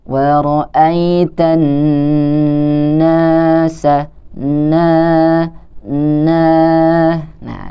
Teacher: huruf na yang juga berharokat fathah ah di depannya bertemu dengan huruf alif maka kita harus membacanya sepanjang dua harokat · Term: Mad Thobi'i